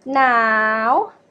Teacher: Now, rising tone. Now means cold.